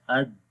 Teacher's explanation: دال کے اندر صفت جہر ہے، سانس بند ہو جاتا ہے، اد، سانس بند ہو گئی.